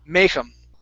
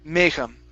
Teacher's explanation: so the stress is at the very beginning of the word.